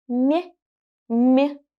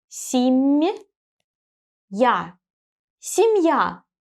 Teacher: So I raise my tongue closer to the hard palate when I pronounce this M. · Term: the sound M is soft